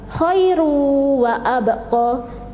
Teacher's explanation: Jadi hurufnya yaitu ba sukun, jadi membacanya yaitu harus memantul. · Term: qalqalah sughra